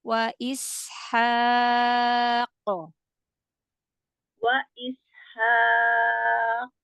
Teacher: Haq. Tahan di makhraj huruf qaf ya, baru qalqalah.